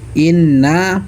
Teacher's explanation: Selanjutnya ayat ke-7 yang inna yang pada awal ayat tersebut karena ada gunnah musyaddadah. Karena ada nun yang bertasdid, cara bacanya didengungkan, ditahan kurang lebih 2 harokat.